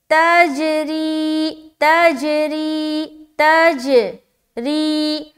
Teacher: गोया कि यूं मालूम होगा कि जीम को आप 2 दफा पढ़ रही हैं, लेकिन हम एक ही बार पढ़ रहे हैं, लेकिन वो टकरा कर वापस आ रही है उसकी आवाज। · रा को बारीक रखते हुए खींचेंगे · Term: कलकला